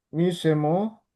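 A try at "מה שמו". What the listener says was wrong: Itu bukan I tapi A.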